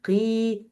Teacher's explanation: We have here the lowest level of heaviness with this قاف. قي. So this قاف followed by this ya, which is empty, and the vowel before it, it's kasra.